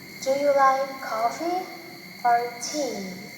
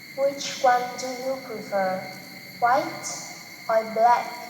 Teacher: the tone rises on the first part of the question and falls on the last part after or. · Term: alternative questions